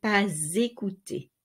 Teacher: the silent S of pas is not silent anymore because it is linked to a vowel. So you say pas écouter.